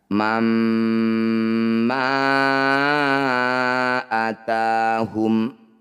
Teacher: Bunyi fathah tanwinnya masukkan pada mim kemudian dengungkan. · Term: idgham bi gunnah